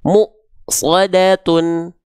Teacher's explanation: huruf-huruf yang bertemu dengan Hamzah sukun itu akan terhenti terhentak